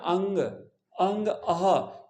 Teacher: ये अंग जो है ये अनुनासिक बोला जाता है इसकी ध्वनि नाक से निकलती है अंग तो नाक से निकलती है इसलिए अनुनासिक होता है और